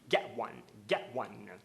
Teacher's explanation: ele não usa a pronúncia recomendada, que é o get one, e sim ele faz a parada glotal